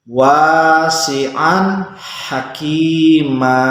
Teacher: Ini ada tanwin fathah bertemu dengan huruf ha, maka membaca tanwinnya harus jelas. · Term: idhar